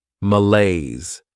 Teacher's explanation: Next is malaise. This word has 2 syllables, and the stress is on that second syllable